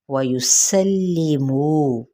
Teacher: सीन की ज़बर को लाम के साथ, लाम की हरकत यानी कसरा को लंबा नहीं करेंगे। मुँह पे वाव मद्दा।